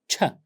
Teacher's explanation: told you two sounds of course here begin with a stop start with a stop and transition into a fricative end with the friction